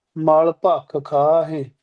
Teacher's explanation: ਖਾਹਿ ਦਾ ਉਚਾਰਨ ਧਿਆਨ ਰੱਖਣਾ ਭੱਖ ਤੇ ਅਧਕ ਲਾ ਕੇ ਬੋਲਣਾ ਖਾਹਿ ਹਾਹੇ ਸਿਹਾਰੀ ਤੇ ਫਿਰ ਬਿੰਦੀ ਲਾਉਣੀ ਆ। ਸੋ ਇਸ ਤੁੱਕ